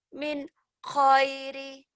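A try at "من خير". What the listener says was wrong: Min khairin. Khairin kan 2. Kalau khairi 1 ya. Min khairin.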